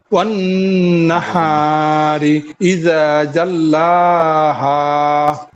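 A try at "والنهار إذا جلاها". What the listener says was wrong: জি মাশাআল্লাহ, ঠিক আছে, সুন্দর হয়েছে।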